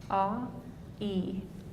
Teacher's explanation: Notice that your tongue is moving up and forward.